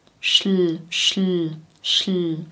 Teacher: Die Zungenspitze ist schon oben bei dem Sch und bei dem L bleibt sie auch oben